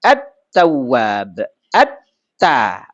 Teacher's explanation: Ketemu dengan huruf ta enggak kedengaran lagi lamnya.